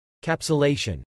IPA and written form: kæpsəlejʃən (Capsulation)